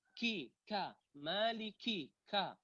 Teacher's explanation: Ka itu hurufnya kuat, kemudian menyemburkan udara. Menyemburkan udara dengan jumlah yang sedikit.